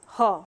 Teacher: ह का जो ह को स्वर यंत्रीय वर्ग में रखते हैं और इसका उच्चारण जो स्थान जो है वो स्वर यंत्र है, यानी कि कंठ के भीतर जो हमारी स्वर तंत्रियां हैं वहीं से ह का उच्चारण होता है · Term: काकल्य वर्ण